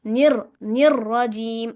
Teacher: रॉ के ऊपर शद है, इसलिए उसे सख्ती के साथ पढ़ेंगे।